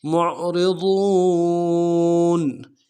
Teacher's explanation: عین کو موٹا ادا کریں گے اور را کو باریک ادا کریں گے · واو کو موٹا ادا کریں گے، واو کے ساتھ ملانا ہے، واو مدہ ایک الف دال میں کھینچیں گے، نون کو نرم سے ادا کریں گے۔